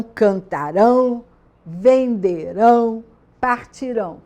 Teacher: É sempre com AM, porque a sílaba tônica não está nesse ão, só quando está no futuro do presente do indicativo, que a sílaba tônica está no ão